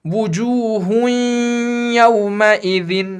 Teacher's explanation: تنوین میں جو نون کی آواز ہے وہ ساتھ رہے گی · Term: ادغام مع الغنہ